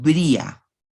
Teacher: el yeísmo guatemalteco ha sido tradicionalmente un yeísmo con elisión del fonema en ciertos entornos, especialmente después de I.